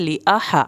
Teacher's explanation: ہا کو حلق سے پڑھنا ہے